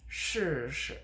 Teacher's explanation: the first one is stressed and the second one is not de-stressed fourth tone but fifth tone.